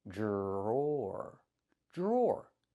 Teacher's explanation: Pronunciation, the dr makes a j sound like in juice and jump. Plus the r, j j j.